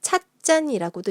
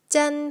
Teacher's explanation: 잔의 지읒이 짠 하고 쌍지읒으로 소리가 났어요